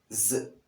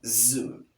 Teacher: The moment you pronounce the sound Z, you realize that the tip of the tongue is in contact with the alveolar ridge in words like zoo. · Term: Z sound